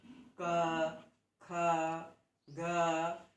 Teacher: क, ख, ग, इन वर्णों को जब हम उच्चारित करते हैं तो यह सब ध्वनियाँ कंठ से निकलती हैं, इसलिए इन वर्णों का उच्चारण स्थान कंठ होता है।